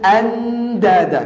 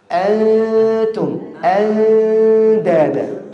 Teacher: pelafadzan nun bertemu dengan ta dan dal itu samar